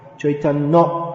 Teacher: It becomes Chaitanya. N becomes held a little longer.